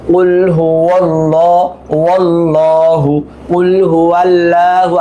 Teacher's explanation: ওয়াওটা গিয়ে এই তাসদীদের কারণে লামের সাথে মিলবে